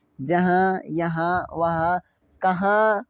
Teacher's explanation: जब नाक से पढ़ा जाएगा तो मेरे उसको नून गुन्ना कहते हैं। · जब हम लोग बोलते हैं तो क्या इस्तेमाल होता है, नाक इस्तेमाल होता है।